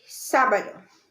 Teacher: It's one of the rule breakers that we have for 3 syllables, that the stress is on the first syllable.